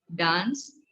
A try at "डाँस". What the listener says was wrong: हाँ, चंद्रबिंदु। लगी है तो चंद्रबिंदी बोलेंगे, जैसे पांच पांच थोड़ी।